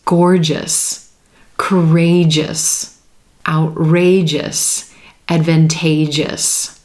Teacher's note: hear that JJ sound right before the suffix makes it that quick single syllable ending